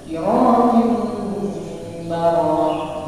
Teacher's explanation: Jadi kalau misalkan di situ, andai kan di situ non mati bertemu dengan ba, diganti di situ menjadi mim ba. Makanya ada mim kecil di situ. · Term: iklab